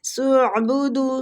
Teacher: یا کے اوپر مد ہو رہی ہے، ہنناس، نون مشدد پہ غنہ کریں گے اور نون کو کھینچیں گے، الف مد بھی ہو رہا ہے، ٹھیک۔ سعبدو، سین کو عین کے ساتھ ملائیں گے، عین وسط الحلق سے نکلے گا، ٹھیک ہے۔ سعبدو، دو کو کھینچیں گے، وہ مد ہو رہی ہے۔